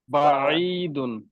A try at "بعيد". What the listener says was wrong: আইন কিন্তু শক্ত হরফ না, আইন কিন্তু পাতলা হরফ, হালকা মাঝখানে চেপে আনবেন, বাঈদুন। অর্থাৎ আপনার যারা ওয়াল রিনাউন্ড কারি দেখবেন তারা আইনকে কত সফট উচ্চারণ করে, ঠিক আছে।